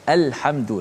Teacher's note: lam qamariyah dibaca dengan izhar, maksudnya dijelaskan lam tu mati.